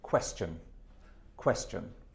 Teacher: Okay, an accent on the first syllable.